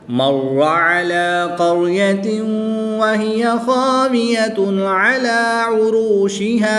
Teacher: واو ساکن سے پہلے را پر پیش ہے تو یہاں پر واو مدہ ہوگا، 1 الف یعنی 2 حرکات کے برابر کھینچ کر پڑھیں گے